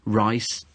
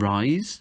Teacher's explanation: that difference between that s and that z sound can make a completely new word which which which can alter alter the meaning and and there